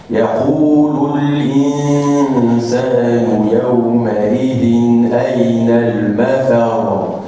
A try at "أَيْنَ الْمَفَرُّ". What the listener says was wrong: لا تقل أين المفر. المد. وين المد؟ أنت قلت أين المفر. المفر. أين المفر. أين المفر.